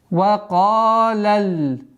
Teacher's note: Ка твердый звук. И автоматически алиф подчиняйте в твердости предстоящему звуку. Два счета тянем.